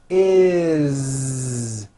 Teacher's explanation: It doesn't matter that it's spelled with an S. It's never is, unvoiced, never. It's always is with a voiced Z.